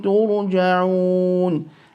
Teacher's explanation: the ra will be read absolutely full because it is preceded by a dhamma while it holds a sukoon